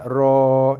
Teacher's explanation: So ra baris atas bunyi ra. Dan dibaca dengan 2 harakat.